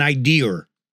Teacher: we add an intrusive r to a word